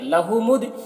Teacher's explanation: یہاں پر دال میں قلقلہ ہوگا اور دال ساکن حرف ہے، تو یہ اپنے پیچھے والے متحرک حرف میم سے مل کر پڑھا جائے گا